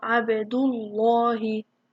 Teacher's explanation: if there's a dhamma before a lam, then it makes the lam heavy